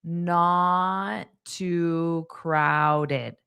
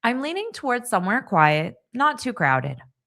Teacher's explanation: So you don't have to pronounce both T's because we only need one.